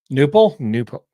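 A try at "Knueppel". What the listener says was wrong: Knipple. I've heard Knipple. I've actually heard the K pronounced, but I could be wrong.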